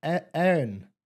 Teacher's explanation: I don't like the way Erin is pronounced. It confuses me. Ear. It's almost like it's one syllable.